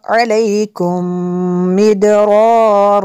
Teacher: मीम साकिन के बाद दूसरी मीम है, यहाँ पे इदगाम शफ़ी होगा इसलिए यहाँ पे गुन्ना करेंगे